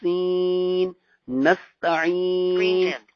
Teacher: اس کا مخرج بھی وہی ہے زا والا، یعنی زبان کی نوک اور ثنائے علیا اور ثنائے سفلا، نیچے والے دو سامنے والے دا، ثنائے علیا اور ثنائے سفلا کا جو ہے وہ کنارہ، اس سے نکلے گا.